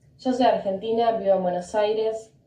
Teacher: Y sounds, they change it to that j sound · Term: Argentinian accent